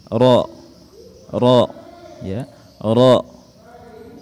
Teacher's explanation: menyentuhkan punggung lidah kita di langit-langit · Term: huruf ro